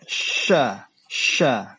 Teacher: lidah bagian tengah itu diangkat ke atas langit-langit. Diangkat tapi tidak ditempelkan. Setelah itu dihembuskan udara keluar.